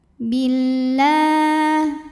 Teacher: Lalu alif lamnya disebut dengan alif lam syamsiyah karena alif lam menghadapi huruf syamsiyah yaitu lam, maka alif lam tidak dibaca